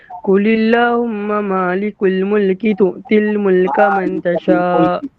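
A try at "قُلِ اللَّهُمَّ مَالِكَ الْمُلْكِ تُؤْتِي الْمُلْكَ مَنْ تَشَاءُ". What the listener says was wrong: Ada silap dekat situ. Malikal, bukan malikul.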